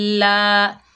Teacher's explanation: लाम के ऊपर खड़ा ज़बर, एक अलिफ की मिकदार खींच कर पढ़ेंगे